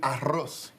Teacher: Unlike the previous digraphs that we have discussed, la CH or che and la doble L or elle, which were once part of the abecedario, la doble R is not a letter, but rather it is a double R intended to elicit the rolling and trilling sound. In English, we refer to the pronunciation of the doble R as the rolled R or the trilled R.